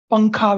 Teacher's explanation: So between pa and kha, the ng sound is there. So the ng sound is very much there in our speech.